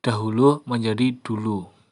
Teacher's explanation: sinkop yaitu pelepasan fonem pada tengah kata